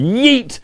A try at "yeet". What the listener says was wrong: I'm sorry, I can't get over the fact you just enunciated your T on yeet. Yeet. Yeet.